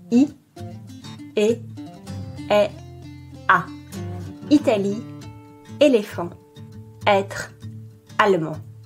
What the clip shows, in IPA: i, e, ɛ, a